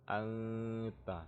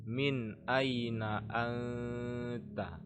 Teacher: karena dia jelas, bacanya jelas, tidak ada dengung, tidak ada perubahan sedikit pun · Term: izhar